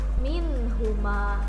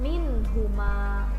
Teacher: Nunnya dibaca jelas, tidak ada samar, tidak ada dengung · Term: izhar